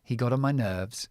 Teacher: got on got on let's use the flap T